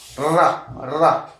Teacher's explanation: रा व्यंजन देखेंगे आप, उच्चारित करेंगे रा को, तो देखिए कैसे आ रहा, रा, तो जीभ जो है दांत के आसपास टकरा रही है